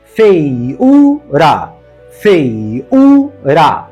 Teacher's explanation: O U é tônico, formou hiato com o ditongo anterior e está sozinho na sílaba.